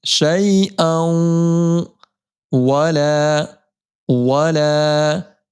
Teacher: عنی شفاعتہم شیئا، یا ساکن سے پہلے زبر آنے کی وجہ سے یا لین ہوگا، جلدی پڑھیں گے، اور دو زبر کی تنوین کو ہم جب واو سے ملائیں گے ایک الف کی مقدار گنہ ہوگا، کیسے؟ شیئا، ادغام مع الگنہ، شیئا ولا ولا ينقذون ينقذون.